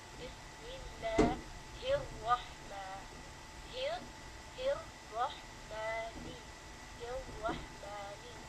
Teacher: you drop the lam in this case, because the ra here has a shadda, a tashdeed on top of it.